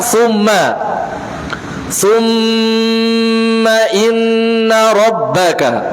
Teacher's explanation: dibaca dengan ghunnah tingkatan yang paling sempurna